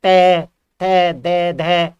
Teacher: जब भी आप जो है तय कर रहे होगे तो आपकी जीभ जो है दांतों को टच कर रही होगी। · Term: दंतय